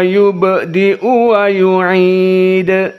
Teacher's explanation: ba dari huruf qalqalah yubdi'u. Qalqalah sugro karena fi wastil kalimah. Dan yu'idu juga qalqalah yang mutawassit karena dia di akhir kalimah dan disukunkan ard.